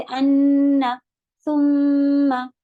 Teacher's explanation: मीम पे भी शद्दा जब होता है उसे गुन्ना करते हैं